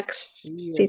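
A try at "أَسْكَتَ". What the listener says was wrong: itu bahasa Inggris jadinya. Ya, askid pakai sin dulu. Askoto. Iya, bukan aksid, askid.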